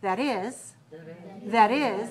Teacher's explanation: the stress is on the is and do you hear how the words are linked together